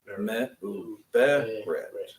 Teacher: You move that emphasis back one syllable.